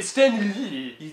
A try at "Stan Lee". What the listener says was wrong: You keep putting emphasis on Lee. Did it there, you said it French.